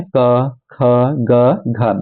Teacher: कंठ्य मतलब कंठ से निकलने वाले